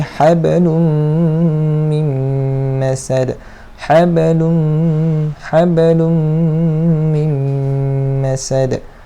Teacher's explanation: Okey, macam di sini huruf mim idgham ma'al gunnah kamil, memasukkan bersama dengung secara sempurna.